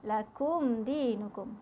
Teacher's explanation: Hukum mim sakinah, mim mati bertemu dal, tak perlu dengung. Jelas sahaja bacaannya. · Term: izhar syafawi